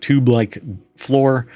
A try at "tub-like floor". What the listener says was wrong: That's like a tub-like floor. You said, tube-like.